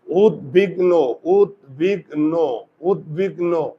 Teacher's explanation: গ অ এর উচ্চারণ হয় না দ অ এর উচ্চারণ হয় না আর এটা কি হবে উৎ বাস তু এই যে দেখো দন্তস্য